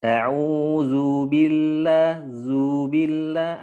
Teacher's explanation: Ya, tamtid itu kepanjangan dikit lah gampangnya gitu. Tadi di zal kayak ada matnya sedikit, Ustaz.